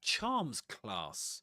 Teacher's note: Two nouns. The accent goes on the first item. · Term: compound noun